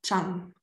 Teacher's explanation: falling tone on a long vowel